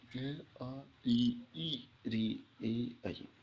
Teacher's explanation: जिन स्वरों के उच्चारण में ओंठ व्रतमुखी नहीं होते उन्हें आवृतमुखी स्वर। गोलाकार नहीं होते उन्हें आवृतमुखी स्वर कहते हैं।